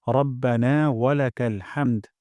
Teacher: ওয়াকফ করব অথবা হামদু পড়তে পারি তবে ওয়াকফ করলে সুন্দর হয় হামদ গলার মাঝখান থেকে হা উচ্চারণ করব